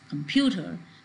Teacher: so here we see that this the syllable pew has a change in pitch · this u sound is said more clearly in comparison to the other vowel sounds which are there in the word